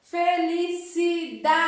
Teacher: Nós temos o da, a sílaba mais forte. A penúltima sílaba, antes da última sílaba. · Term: paroxítona